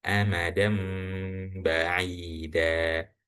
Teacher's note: dal berharokat fathatain atau tanwin yang bertemu dengan huruf ba sehingga dibaca iklab